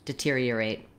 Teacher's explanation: The main stress in deteriorate is on the tier syllable. And even though we have the letters ER here, we have the ear diphthong. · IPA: /dɪˈtiriəreɪt/